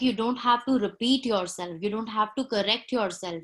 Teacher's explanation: correct yourself and repeat yourself, are the important word in the context I'm saying. I'm giving stress on those words.